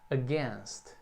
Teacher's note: E como a sílaba tônica é a segunda, então o A ali é bem curtinho mesmo.